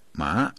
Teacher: Second tone, that's ma, rising tone